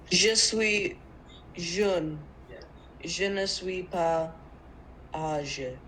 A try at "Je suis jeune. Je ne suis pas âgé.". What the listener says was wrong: Oui, parfait.